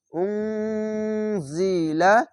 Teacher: এখানে ইখফাগুন্না বাংলা অনেস্কার মত হবে